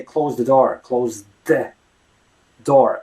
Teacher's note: you gotta imagine that the th is actually a D